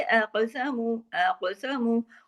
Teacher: काफ मोटा भी पढ़ा जाएगा और काफ पे कलकला भी होगा, क्यों? काफ जज़म के साथ है।